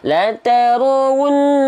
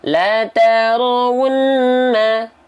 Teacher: Nah, setiap hukum tajwid yang ada gunnahnya, dia harus ditahan dengan 2 harokat tapi kadar gunnah. Jangan sampai 2 harokat tapi kadar mad.